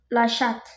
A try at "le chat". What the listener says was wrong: Non, prononce pas le T. Le chat. Je prononce pas le T.